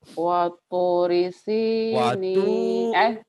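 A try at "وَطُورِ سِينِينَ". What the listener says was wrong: Watu. Panjang. Waturi sinin.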